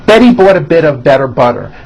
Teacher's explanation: They're only D's, d, d, which are voiced. · notice that you do not hear any T sounds